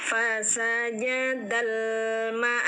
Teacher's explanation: alif lam terbaca terang karena ada sukun dal, disebut alif lam qamariyah.